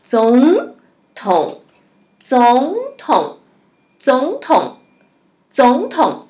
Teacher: duas sílabas de terceiro tom, a primeira sílaba vai para o segundo tom.